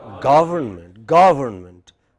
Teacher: Government. Main stress on ga.